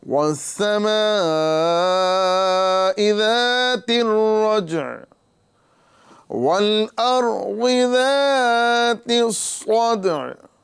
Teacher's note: یہاں پر عین کو ساکن کرنے کی وجہ سے ہم عین کی آواز کو اس طرح ظاہر کر رہے ہیں، وَالسَّمَاءِ ذَاتِ الرَّجْعِ وَالْأَرْضِ ذَاتِ الصَّدْعِ، صاد کو پر کریں گے، حروف مستعلیہ ہے، دال میں قلقلہ کریں گے